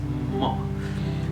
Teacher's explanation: So mo is a bilabial stop sound, and when we produce the sound, we stop the air with the two lips, and the air comes out with the nose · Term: nasal stop